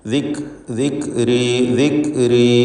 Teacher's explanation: ഹംസ് എന്ന അതിൻ്റെ സിഫത്ത് നിലനിർത്തിക്കൊണ്ട് വ്യക്തമാക്കി ഉച്ചരിക്കുക